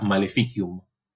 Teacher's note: tengo vocal antes de vocal esa idea de que es una y breve entonces el acento cae en la anterior